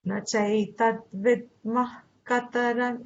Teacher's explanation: It's almost like a half aspirate. So it's a jiva mulya sound.